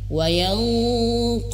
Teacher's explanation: Jadi ketika nun bertemu huruf qaf itu benar-benar tebal.